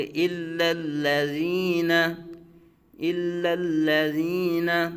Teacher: یہ دونوں لام الا کا بھی اور الذین کا بھی، یہ دونوں لام باریک پڑھے جائیں گے۔